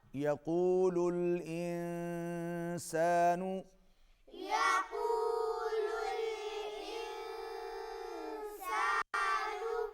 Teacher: اخفا ہوگا، آواز ناک میں جائے گی